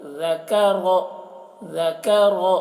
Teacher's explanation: اور را کو موٹا کر کے پڑھ رہے ہیں